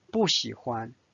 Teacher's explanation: 不 喜 is the third tone, so 不 is pronounced as the fourth tone.